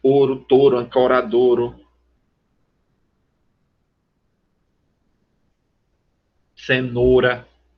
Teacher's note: frequentemente monotongam-se os ditongos ai, ei e ou. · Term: monotongação